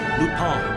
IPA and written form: ˈlo͞opin (lupin)